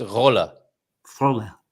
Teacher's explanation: So roll the R and keep the L sound quite singular.